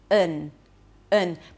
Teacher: in the last syllable, we have a reduced vowel, the schwa, and an n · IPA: ə